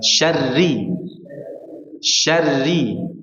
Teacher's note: huruf ra selalu disembunyikan. Ya. Sifat getarannya selalu disembunyikan.